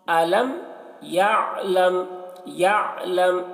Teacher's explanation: أَلَمْ يَعْلَمْ عین کو حلق سے ادا کریں گے اور لم یہاں پر میم میں غنہ کریں گے، غنہ اخفا